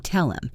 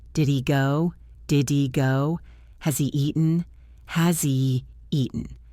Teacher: If you are listening for the H, you will wait too long, so you have to get used to the pronouns blending into the verbs. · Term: The H is gone